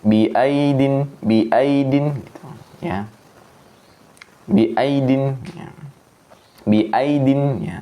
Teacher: lentur tuh enggak dipanjangkan satu harakat saja. Biidin biidin enggak boleh. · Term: lin lentur